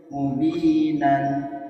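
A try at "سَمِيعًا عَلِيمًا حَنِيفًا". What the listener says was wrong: Untuk fathah tanwinnya masih kurang sedikit lagi untuk ini. Sami'an, an, aliman, hanifan. Ada suara sedikit mengalir. Itu sedikit mengalir itu kemana? Ke al-khaisum. Dia makhrajnya kan di al-khaisum. Karena kalau dipecah, dia aslinya itu ada nun sukun. Kalau dipecah itu seperti ini, Pak. Aun. Jadinya aun. Aslinya itu cuman dibacanya ada tapi tidak tertulis nun sukunnya. Dibacanya ada. An, ada nun sukunnya, tapi nggak tertulis.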